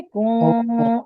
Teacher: आवाज को खींचना है, और नाक के अंदर ले जाना है और नाक में घुमाना भी है आवाज को